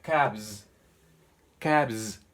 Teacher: Pueden escuchar cabs, como vibro la S. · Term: S vibrante